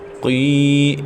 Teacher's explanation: قی قاف موٹے حروف میں سے ہے، پر کر کے پڑھیں گے. قاف کے بعد یا ساکن، اس سے پہلے زیر، تو یا مدہ ہے، ایک الف تک کھینچیں گے.